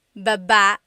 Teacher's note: Emphasis is on the second syllable